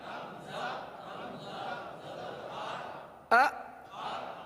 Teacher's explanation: یہ جھٹکا ہے، یعنی آپ ایک دم سے آواز کو روک لیں